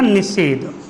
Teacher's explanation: जैसे ही दंत सा से पूर्व ई या ऊ में से हमें कोई दिखाई देता है तो दंत सा किस में बदल जाता है? मूर्धन्य सा में।